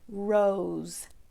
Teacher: it does have the o magic e pattern Oh e now you might hear the s in there sounding like Z